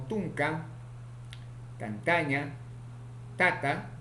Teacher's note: consonante ta, oclusivo, simple, alveolar, sordo, ocurre en posición inicial, medial, final